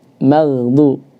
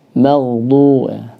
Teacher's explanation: Karena juga kadang-kala ketika membaca maghdu ini mimnya ke bawah tebal maghdu atau ghainnya ke bawah tipis maghdu. Yang benar mim tipis ghain tebal